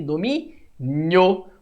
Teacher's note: o ditongo seria um oral e crescente, pois o O é mais forte que o I